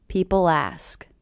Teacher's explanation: I do hear that L as really linking to the beginning vowel sound.